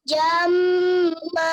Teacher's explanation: Maknya kepanjangan, 2 harokat saja